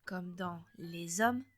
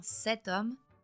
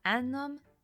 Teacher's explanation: avec le mot homme, vous entendrez zom comme dans les hommes, tom comme dans cet homme, nom comme dans un homme